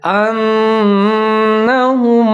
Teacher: یہاں پر بھی ہم غنہ کریں گے، آواز کو 3 سے 4 سیکنڈ تک ناک میں لے جائیں گے